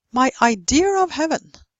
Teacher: they even put in an R where there is no R